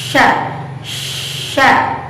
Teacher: Hams itu adalah seperti yang pernah kita jelaskan, hams itu keluarnya nafas. Jadi ketika huruf shin itu sendiri dilafazkan, maka di situ terdapat nafas yang dikeluarkan